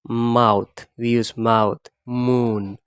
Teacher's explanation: the air flow is from our nasal cavity rather than from the oral cavity